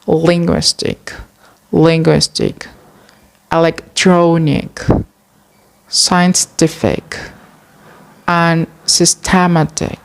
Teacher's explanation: the stress is commonly placed on the second to the last syllable of the word.